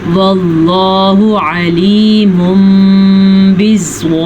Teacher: لفظ اللہ کو ہم نے پر پڑھنا ہے کیونکہ لفظ اللہ سے پیچھے زبر ہے.